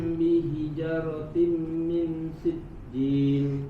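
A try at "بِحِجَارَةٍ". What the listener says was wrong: Bihijaratim, ja-nya panjang. Bihijaratim.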